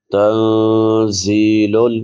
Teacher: زا سیٹی والے حروف میں سے ہے، 3 حروف جو سیٹی کے ساتھ ادا ہوتے ہیں، زا سین صاد، تو اس کو سیٹی کے ساتھ سختی سے ادا کریں گے۔ زا کے بعد یا مدہ ہے، یا ساکن ما قبل کسرہ یعنی زیر ہے، تو اس کو ایک الف کے برابر لمبا کریں گے۔